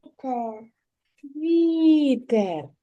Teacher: а в слові вітер звук в приголосний м'який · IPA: [вʼ]